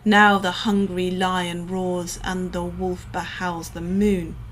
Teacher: despite being in Falling meter the lines end on a stressed syllable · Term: catalectic line